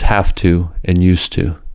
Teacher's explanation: With this knowledge, we can understand why have to and used to are pronounced as have to and used to. The voiced V and Z in have to and used to, respectively, are followed by a voiceless consonant ta. In this situation, V and Z become voiceless f and s.